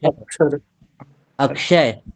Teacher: अक्ष के बीच में एक क और बोला जाता है